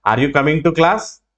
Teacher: ఆర్ యూ కమింగ్ టు క్లాస్ అంటే ఇప్పుడు క్లాస్ అని పైకి వస్తుంది, కాబట్టి ఇక్కడ మనం ఏం ఉపయోగిస్తున్నాం అంటే రైజింగ్ ఇంటోనేషన్ ఉపయోగిస్తున్నాం.